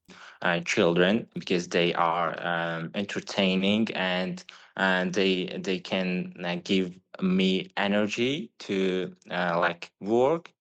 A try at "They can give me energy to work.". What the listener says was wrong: Again, pronunciation does feel a little bit staccato here. They can give me energy to work. What we find with a natural flow of speech is that the person who's speaking doesn't need to access the language.